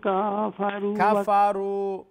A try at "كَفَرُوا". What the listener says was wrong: کفروا کاف کو لمبا نہ کریں.